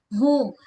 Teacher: So tak nak hilang bunyi ha bulat tu mesti sebut dengan keadaan jelas dari pangkal kerongkong.